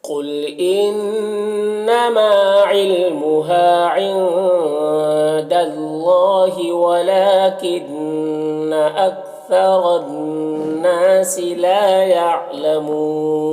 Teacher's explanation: حفی عنہا. قل قاف حروف مستعلیہ میں سے پر پڑھیں گے انما نون مشدد غنہ ہوگا ما میں الف مدہ ہے علمها یہاں پر بھی الف مدہ